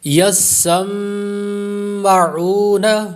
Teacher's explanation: میم مشدد کا غنہ اور واو مدہ